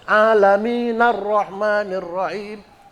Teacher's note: Dia madnya mad asli, mad tabi'i. 2 harokat aja, nggak boleh panjang-panjang.